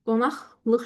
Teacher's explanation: Bu zaman qeyd edirsiniz ki, özündən sonra samitlə başlayan şəkilçi işləndiyinə görə mən q-nı x kimi tələffüz etdim